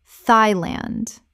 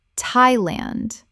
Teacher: The TH makes a simple T sound, not the TH sound of the or thought.